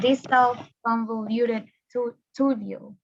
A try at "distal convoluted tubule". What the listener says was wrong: Great, you did great. Yes, that would be the correct pronunciation.